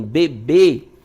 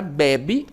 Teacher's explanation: A sílaba tônica está na última sílaba. Já na palavra bebe, ela está na penúltima sílaba.